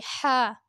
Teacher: اسے حلق سے ادا کیجیے